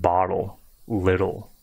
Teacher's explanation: you don't want to make the T too harsh to me these double T's they almost sound like a soft D